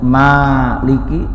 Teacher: panjang bacaan Asal itu adalah dua ketukan atau dua harakat Tidak kurang tidak lebih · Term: mad asli